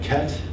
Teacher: the front lax vowels are lowering and backing in California and most of the West as well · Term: lax front vowels